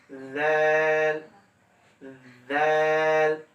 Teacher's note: জিহ্বার আগা সামনের উপরে দুই দাঁতের আগার সঙ্গে লাগবে। সা, ছায়ের ক্ষেত্রে যেভাবে আমরা উপরের দাঁতের সঙ্গে লাগাইলাম, জালটা ওইভাবে জাল, জিহ্বাটা বের করবেন, জাল জাল।